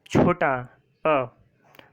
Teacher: अ बोलने में केवल जीभ का बीच वाला हिस्सा उपयोग हो रहा है अ को बोलने में, तो ये मध्य स्वर हो गया।